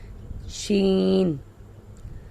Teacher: تفشی، پھیلنا، یہ صرف شین کی ہے، مطلب اس کا یہ ہے کہ اس کو ادا کرتے وقت آواز منہ کے اندر پھیل جاتی ہے